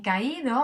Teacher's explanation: aquí sí tenemos un hiato y el acento está en la I, por lo tanto la I, aunque es normalmente débil, en este caso tiene acento y por lo tanto es fuerte.